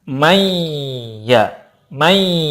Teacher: Salah satu bukti ada gunanya adalah dengan ada getaran di hidung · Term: ghunnah